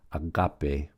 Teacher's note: notice the accents on the second syllable